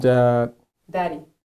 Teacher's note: it's a very swift, it's like just a tap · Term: flap D